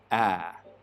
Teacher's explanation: We make it with the tongue cupped down low and towards the front of the mouth like this. Ah. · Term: trap vowel